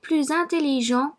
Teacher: I pronounce the S in plus as if it was a Z, whereas it's usually silent. This is called liaison and happens when the following word starts with a vowel.